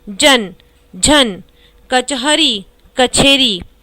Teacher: इसमें अल्प प्राण ध्वनियों के महाप्राण ध्वनियों में परिवर्तन की प्रवृत्ति है